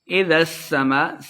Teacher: اذا السماء انشقت، اذا السماء سین مشدد ہے، ذال کو سین کے ساتھ ملا کے پڑھنا ہے، سین پہ سیٹی کی آواز آئے گی۔